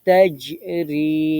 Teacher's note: জিম জিহ্বার মাঝখানে শক্ত করতে হবে কলকলা